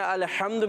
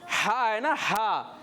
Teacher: आइन हा हलक के दरमियान से अदा होते हैं